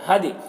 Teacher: یہاں پر دال میں قلقلہ ہو رہا ہے